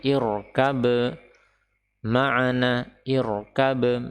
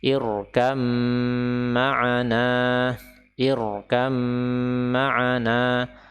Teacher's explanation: huruf ba ini seolah-olah tidak ada dan memang tidak perlu kita baca. Jadi bukan irkab ma'ana, irkab, tidak demikian, tetapi langsung dia idgham, gugur dan masuk ke dalam huruf mim.